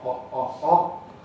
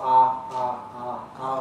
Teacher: in RP and so on we have a rounded back open vowel, oh. Americans typically have an unrounded vowel, ah